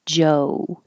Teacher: for the American o it should have an o u